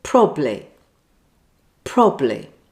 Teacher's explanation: this pronunciation mistake is probably just down to laziness, missing out the middle syllable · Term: missing syllable